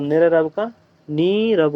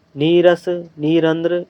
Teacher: जो स्वर है उसका दीर्घ हो जाता है और विसर्ग का या रे का लोप हो जाता है जब 2 रे लगातार आते हैं। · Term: ढरलोप